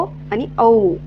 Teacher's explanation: ओ आणि औ चा उच्चार करत असतानी जो आपले जे ओठ आहे त्यांचा आकार कसा होत आहे गोल होत आहे